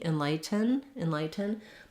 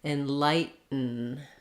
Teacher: most native speakers are gonna use a stopped t there so you're not gonna hear the release of air on the t sound